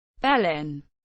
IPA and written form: bəˈlɪn (Belen)